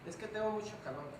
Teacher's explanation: nuestra característica es pérdida de tensión articulatoria en consonantes